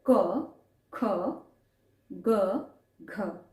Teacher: अ कंठ में आपको वाइब्रेशन फील होएगा आ ठीक है सिमिलरली क ख ग घ इसका जो उच्चारण आप कर रहे हैं वो क्या कर रहे हैं कंठ से कर रहे हैं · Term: कंठ स्थान